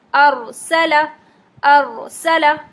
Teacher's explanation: اب یہاں ساکن را آ گیا ہے، اور ساکن را میں آپ کو یہ دیکھنا ہے کہ پچھلی حرکت جو ہے اگر وہ زبر یا پیش ہے تو پھر آپ را کو موٹا پڑھیں گے، موٹا ساکن پڑھیں گے، اور اگر زیر ہے تو پھر ہم را کو باریک پڑھیں گے۔ ابھی یہاں زبر ہے تو ہم را کو موٹا پڑھیں گے